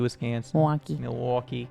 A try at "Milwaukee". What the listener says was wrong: There's no L in Milwaukee. There's not when It's not when you say it. you spell it. No, you spell it that way, but when you say it, you don't say it. It's Milwaukee.